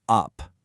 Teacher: when that same sound gets stressed, it gets a little louder, a little longer, and becomes the stress schwa you hear in up